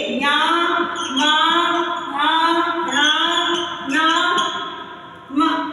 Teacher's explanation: इनका उच्चारण स्थान क्या है नासिका ये किससे उच्चारित होते हैं नाक से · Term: पंचम वर्ण